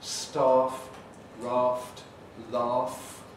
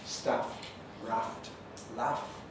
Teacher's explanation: the broadening happened before voiceless fricatives